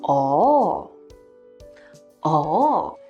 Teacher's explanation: it is marked as the fourth falling tone but in real life people often say with a twist like a combination of tones